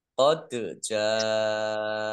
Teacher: dal sukun, bacaan kolkolah, dibaca memantul, ditampakkan pantulannya · Jim fathah alif mat tabi'i, tetapi karena bertemu dengan huruf hamzah dalam satu kata, maka menjadi mat wajib muttasil. Dibaca panjang, harus 5 harokat.